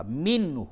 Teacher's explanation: نون ساکن کے بعد ہا ہے، اس جگہ پہ اظہار ہوگا